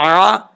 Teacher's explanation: عین جو ہے درمیان حلق سے ادا ہوتا ہے، حلق کا جو درمیان والا حصہ ہے وہاں سے عین ادا ہوتا ہے